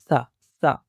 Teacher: और इसी तरह सा है, इसका मखरज है ज़ुबान की टिप ऊपर वाले दांत के सिरे के साथ लगती है, यानी दोनों दांतों के दरमियान में थोड़ी सी बाहर। इसको नरमी के साथ पढ़ा जाता है, यानी ये आप इस पिक्चर को देखते हुए इसको समझिए कि ज़ुबान की टिप सामने दांतों के साथ नरमी के साथ लगाएंगे और इसकी साउंड को पढ़ते हैं सा सा, बहुत नरमी के साथ।